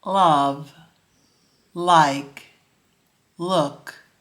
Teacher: the tongue is behind your front teeth or at the bumpy Ridge just behind your front teeth the alveolar Ridge you can also put your tongue tip just a little past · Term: light l